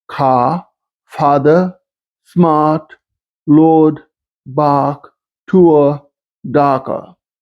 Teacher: In many parts, this dialect is non-rhotic, such as in car, father, smart, lord, bark, tour, darker,